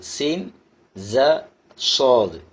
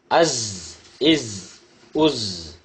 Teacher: இரு உதடுகளையும் சேர்க்கக்கூடாது, இரு பற்களையும் சேர்க்கக்கூடாது. நுனி நாக்கு முன் பற்களின் நடுவில் இருக்க வேண்டும். குரல் அழுத்தமாக ஒலிக்க வேண்டும். குரல் விசில் ஓசையுடன் ஒலிக்க வேண்டும்.